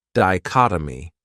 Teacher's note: this word has four syllables and the stress is on that second syllable dichotomy that third syllable has that schah that uh sound D